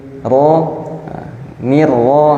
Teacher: ro dia ujung lidah yang digetarkan ke arah langit-langit